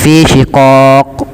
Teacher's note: Kesalahan yang terjadi tidak memantulkan qaf seperti fi syiqaaq.